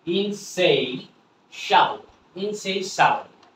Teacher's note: টিআই এর উচ্চারণটা হবে শ, আর শ এর সাথে এ হয়ে গেল শা